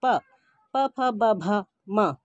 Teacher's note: प, फ, ब, भ, म, ओष्ठ व्यंजन। जब हम इन व्यंजनों का उच्चारण करते हैं तो हमारे होंठ जो है आपस में टकराते हैं, इसलिए इसको ओष्ठ व्यंजन कहा गया है।